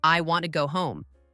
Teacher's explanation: in the sentence, I want to go home, the words want and home are stressed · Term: sentence stress